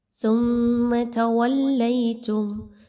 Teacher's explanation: ثم تولیتم، سا اور میم کو آپس میں مضبوطی کے ساتھ ملائیے، میم پر میم مشدد کا غنہ کیجیے، آواز کو ناک میں لے کر جانا ہے، سا کو بہت نرمی کے ساتھ پڑھنا ہے، سیٹی کی آواز اس میں نہیں آنی چاہیے، سین اور صاد کی طرح سا کو نہیں پڑھا جاتا بلکہ زبان کو تھوڑا سا باہر نکالیے، سا کی ادائیگی اس وقت ہوتی ہے۔